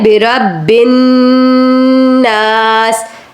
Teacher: تو اعوذ ذال پر زبان لگائیں گے, بربن کہتے ہوئے آگے بڑھیں گے. یہاں پر با مشدد ہے, نون مشدد ہے, تو دونوں کو رک کر ذرا دبا کر غنہ کر کے ادا کرتے ہوئے آگے جائیں گے. اس لیے بربن ناس ایسے کر کے اس کو پڑھنا ہے آپ نے.